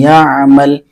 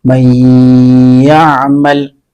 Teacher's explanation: ناک میں آواز لے جا کر کے غنہ کے ساتھ پڑھا